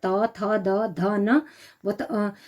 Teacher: दंत है तो दांतों के साथ बोले जाते